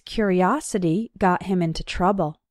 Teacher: in the noun form curiosity the third syllable is strong